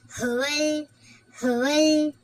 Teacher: அலிஃப் லாம் லாமுக்கு மேல சுகுண்டு இருக்கா அப்ப இது கமரியா சரிங்களா வெளிப்படுத்தி ஓதணும்